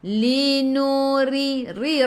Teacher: ra baca dengan nipis, ra baris bawah tarqiq